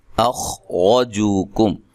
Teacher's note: خوا کو موٹا ادا کرنا ہے، را کو موٹا پڑھنا ہے، را کے اوپر زبر ہے